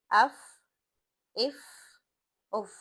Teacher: ہم کوئی جھٹکا بھی نہیں دے رہے، نرمی سے ادا کر رہے ہیں، سانس کی آواز باہر آ رہی ہے یا ہوا باہر خارج ہو رہی ہے ، زبان ہماری کوئی جھٹکے نہیں دے رہی، وہ اپنی جگہ